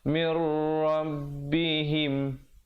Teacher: di situ nun mati bertemu ra idgham bila ghunnah